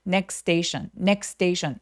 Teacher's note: 중간에 지금 자음이 세 개가 있으니까 중간 삭제. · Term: 중간 T 삭제